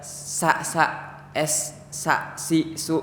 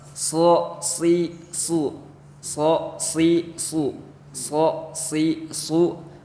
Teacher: kalau huruf so itu agak ditarik ke belakang si lidahnya. Jadi biar tebal.